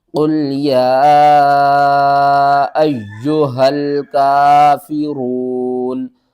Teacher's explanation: یا کے اوپر تشدید ہے، یہ 3 دندانوں والی شکل، تو جب بھی یہ کسی حرف کے اوپر آ جائے تو اس کو ہم سختی کے ساتھ پڑھتے ہیں اور 2 بار پڑھتے ہیں۔ تو یا کو ہم سختی کے ساتھ بھی پڑھیں گے اور 2 بار بھی پڑھیں گے